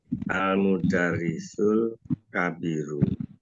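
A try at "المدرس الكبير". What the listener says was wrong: Al mudaris, tapi intonasinya harus tinggi, Pak. Tetap yang di atas.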